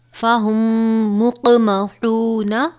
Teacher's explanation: میم ساکن کے بعد میم آئی ہے، لہٰذا یہاں پر ادغام شفوی ہوگا یعنی غنہ کریں گے